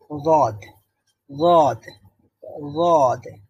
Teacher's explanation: জিহ্বার গোড়ার একটা পার্শ্ব উপরের দাঁতের গোড়ার দিকে যুক্ত হবে, এটা তখন উচ্চারিত হবে গদ, গদ, গদ।